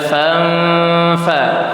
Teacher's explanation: ketika ada nun mati bertemu dengan huruf ikhfa itu dibacanya dengung. Fanfa, dengungnya 2 harokat.